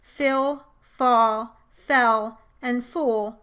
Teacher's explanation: Another consonant context which can change the quality of the preceding vowel is when the consonant L is in the coda of the syllable. The consonant itself changes its quality in the coda to a more W-like sound called dark L, and then combines with the preceding vowel to change the quality of the vowel somewhat. · I pronounce the words fill, fall, fell, and fool with the dark L, with the I, and U vowels, all of which may sound a bit different than usual in this context.